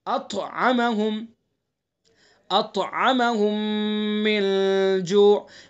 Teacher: طا حروف مستعلیہ میں سے پر پڑھیں گے اور طا کے اندر قلقلہ بھی ہوگا